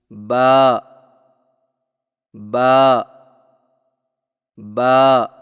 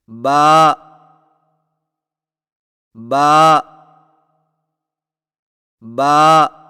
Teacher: होठों के गीले हिस्से को सख्ती से मिलाकर बारीक आवाज में पढ़े · با کی ادائیگی میں ہونٹوں کے گیلے حصے کو سختی سے ملا کر باریک آواز میں پڑھیں